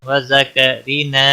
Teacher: را کو زیر کی وجہ سے باریک پڑھنا، نا الف مدہ ہے، ایک الف کے برابر کھینچ کر پڑھیں گے۔